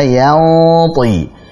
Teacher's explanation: Nun sukun ketemu dengan ta, kita tebalkan gunnahnya. Sebagaimana kaidah kalau dalam ikhfa hakiki, jika setelahnya adalah huruf tebal maka gunnahnya tebal.